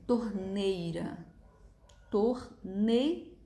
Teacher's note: É óbvio que a letra I é a semivogal, que é a que está saindo com som mais fraco.